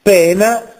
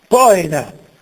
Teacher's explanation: poena che ha un parallelo nel Greco poin do c'è dittongo in italiano oe si riduce a una sola e